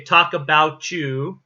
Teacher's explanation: what you don't hear in that sentence is the t in the about